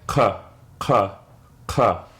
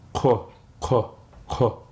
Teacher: All you're doing is rounding your lips when you make that sound.